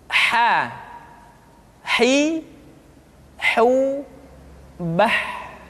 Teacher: huruf ha dikeluarkan dari tengah-tengah tenggorokan